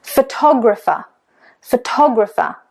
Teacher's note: So the stress is on the second. It's actually on tog. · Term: syllable stress